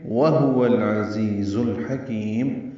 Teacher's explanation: واو ہونٹوں کی نہ تمام گلائی سے ادا ہوگا، ہا اقصی حلق سے ادا کریں گے، پھر واو کو لام سے ملانا ہے.